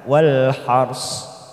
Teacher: ro sukun kita baca tafkim karena didahului fathah